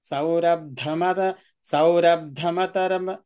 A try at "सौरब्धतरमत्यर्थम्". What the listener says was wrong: not ma saurabdha not ma saurabdha tara